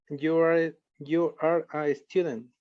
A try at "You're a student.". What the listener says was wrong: Muy bien, pero mira, te pasó algo muy parecido a lo de Lisbeth, que pronunciaste separado. You are. Como está contraído, pronunciamos lo contraído.